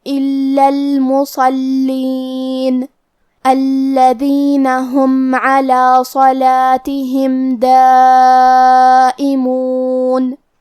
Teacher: صاد حروف تفخیم میں سے ہے، تو ہم یہ حرف کو بھاری آواز میں اور منہ پھلا کے پڑھیں گے